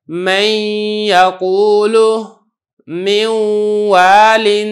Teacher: اب یہ دیکھیں جو نون ہے اس کی جو صفت غنہ ہے وہ کچھ نہ کچھ ادا ہو رہی ہے. اس وجہ سے اگرچہ میں پڑھ تو واو رہا ہوں لیکن یہ جو ادغام ہے یہ ناقص ادا ہو رہا ہے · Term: ادغام ناقص